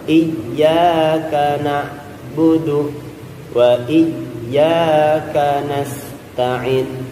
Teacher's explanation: karena ain itu di tengah tenggorokan, bukan di paling bawah atau terlalu dalam, bukan, di tengah tenggorokan.